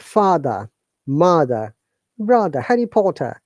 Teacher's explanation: in British English letter r is pronounced silently